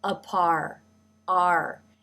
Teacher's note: And the r consonant sound takes over this ah vowel. So the jaw drops for the vowel. But even as you are beginning this vowel sound, the lips and the tongue start moving into position for the R consonant sound.